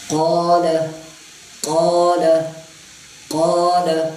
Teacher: اب اس کو قول نہیں پڑھنا, مطلب ہونٹوں کو گول کر کے اس کو موٹا نہیں کرنا, بلکہ اس کو پڑھیں گے ادائی خود بخود موٹا ہوتا ہے.